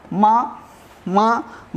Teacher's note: माँ, माँ, माँ हम बोलते हैं तो नासिका से आवाज़ आती।